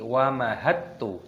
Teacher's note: Ini hakikatnya dalnya tidak terbaca, langsung kita masukkan ke ta ini, bukan dibaca wamahadtu, bukan, tapi wamahattu. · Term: idghamkan